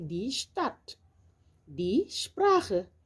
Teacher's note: lorsque un S est devant un T ou devant un P, il se prononce comme un Ch